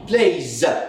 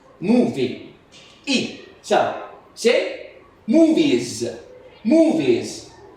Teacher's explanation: the final s is pronounced also z when it comes after a vowel sound